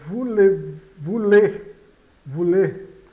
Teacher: O ou de vulê eh tem o som de u